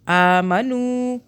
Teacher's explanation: حمزہ کھڑا زبر آ، ایک الف کے برابر کھینچا